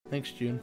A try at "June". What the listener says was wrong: You're pronouncing stuff You said Jin. Or like, you said like Gene.